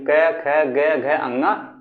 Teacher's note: इसका उच्चारण कंठ से किया जाता है, कंठ स्पर्श व्यंजन है